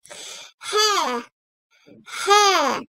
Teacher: Boğazın en altından, göğüse bitiştiği yerden nefes verir gibi çıkarılan H harfi ince sesli ve yumuşak bir harftir.